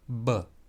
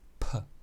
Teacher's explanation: That means you pronounce it with your lips, and it is voiced, b. When you remove the voicing, when you unvoice this b sound, you get a bilabial unvoiced consonant, or p. And that is the pair to b.